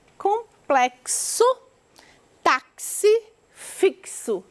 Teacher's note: o x com som de ks